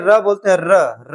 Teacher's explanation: र बोलते हैं जैसे लग रहा है कि जीभ पूरा वो कंपन कर रही है, रगड़ रही है। तो यह प्रकंपित व्यंजन हमारे पास केवल एक है, कौन सा, र।